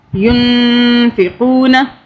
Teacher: مثل الذین ينفقون، یہ نون جو ہے نون ساکن ہے اور اس کے آگے یہ فا کا حرف جو ہے یہ اخفاء کے حرف میں سے ہے، یعنی کہ نون ساکن تنوین اور 2 پیش کے آگے جب اخفاء کا حرف آئے گا تو یہاں پہ ہم غنہ کریں گے، نون پہ اخفاء کریں گے